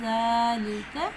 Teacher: ساکنہ کے ساتھ۔ زال کو نرمی سے پڑھیں گے ذالک، اور زال کا مخرج ہے زبان کی نوک، ثناء کا اندرونی کنارہ